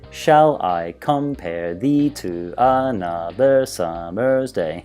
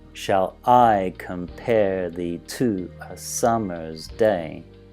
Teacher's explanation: a date okay so it's like each line has ten syllables it has a nice rhythm every second syllable is stressed